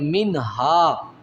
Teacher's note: یؤخذ منها، میم کے بعد نون ہے اور نون ساکن ہے اور اس کے بعد ہا ہے حروف ہلکی میں، تو یہاں من پہ غنہ نہیں کیا جائے گا